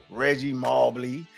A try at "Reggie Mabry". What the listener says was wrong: It's Reggie Mabry. There's no L. It's an R. After the B, it's an R, not an L.